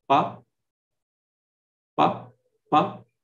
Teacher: while pronouncing pa, there is hardly any vibration